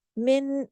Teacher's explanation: ताम बिल गुन्ना, यानी ऐसा इदगाम जिसमें भरपूर गुन्ना होगा। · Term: इदगाम ताम बिल गुन्ना